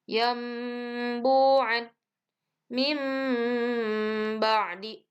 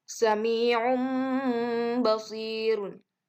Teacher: bunyi nun mati atau tanwinnya itu dirubah menjadi huruf mim. Intinya merubah bunyi n menjadi m. Jadi apabila ada bacaan nun mati atau tanwin menghadapi ba, maka harus digantikan menjadi huruf mim. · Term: iqlab